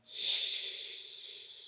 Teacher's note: There's no voice, there is not much pressure. Basically, everything you do is breathe out a lot.